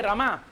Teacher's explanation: रमा में रेफ के बाद जो आकार है वह ह्रस्व, और म के बाद जो आकार है वह दीर्घ आकार